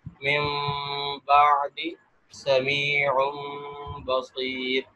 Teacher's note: تو یہاں کیا ہوا کہ ایک تو یہاں دو تبدیلیاں ہوئی، ایک تو نون یا ساکن یا تنوین کہ جو نون کی آواز تھی وہ میم سے بدل گئی، اور دوسرا اس کے ساتھ ساتھ اس کے اندر اخفا ہوا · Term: اقلاب